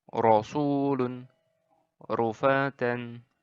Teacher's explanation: cara membaca huruf roh dengan cara tafkhim jadi ditebalkan ditebalkan ditebalkan itu ya kayak HAM ojok gitu tapi nggak medok